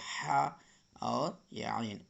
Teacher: یہ دونوں ح اور عین حلق کے بیچ حصے سے نکلتا ہے۔